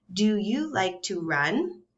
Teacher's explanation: and my voice goes up at the end